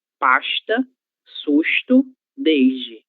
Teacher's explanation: Em alguns lugares, na verdade na maior parte do Brasil, essa letra S terá som de chã.